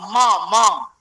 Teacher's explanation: मकार का कौन दो स्थान है, ओष्ठ नासिका